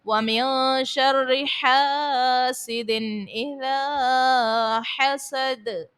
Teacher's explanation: نون ساکن کے بعد شین ہے حرف اخفا کا، غنہ کریں گے، رو کو باریک پڑھیں گے، الف سے پہلے زبر ہے، الف مدہ، اور پھر اذا میں الف سے پہلے زبر ہے، الف مدہ، اور دال کو ساکن کرنے کی صورت میں خوب ظاہر کریں گے۔